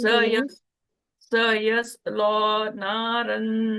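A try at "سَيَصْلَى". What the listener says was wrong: लाम को मोटा नहीं करें सयस्ला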